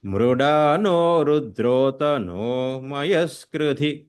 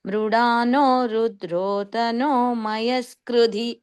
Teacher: మృడానోలో అనో పైనకి వెళ్ళింది స్వరము రుద్రోతనోలోనో కిందికి వస్తుందన్నమాట